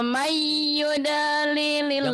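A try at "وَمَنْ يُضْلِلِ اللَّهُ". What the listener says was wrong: Jangan yud. Yud. Jangan ada e-nya, jangan ada e-nya.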